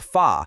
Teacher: a crisp fa, where your lower lip tucks just slightly under your top teeth